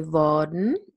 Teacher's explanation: I definitely don't pronounce the R here. I say worden. I just use the R to lengthen the vowel.